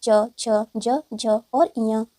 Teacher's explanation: च वर्ग के सभी व्यंजन तालव्य के माध्यम से बोले जाते हैं